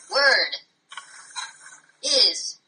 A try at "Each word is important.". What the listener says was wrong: Oh, it's going to be a long uphill battle with you, Mr. Monotone. Try again.